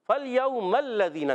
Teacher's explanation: मीम को लाम से मिलाएंगे और लाम पर ज़बर है, ज़रा तशदीद भी है, रुक कर अदा करेंगे।